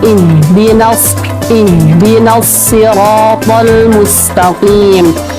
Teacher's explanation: Terus yang ayat ke-6, ihdinas siratal mustaqim. Perhatikan huruf H itu makhrajnya bukan di dada, bukan ih, tapi di tenggorokan ya, lebih halus lagi daripada di dada